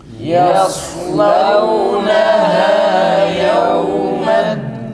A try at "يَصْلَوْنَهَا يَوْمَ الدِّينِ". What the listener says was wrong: Dalda ses tam kesilsin, nefes tekrar. Dal güzel çıksın, bir de lam kalın değil arkadaşlar.